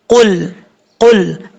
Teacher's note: कौफ हरूफ मुस्तालिया में से है, पुर पढ़ा जाएगा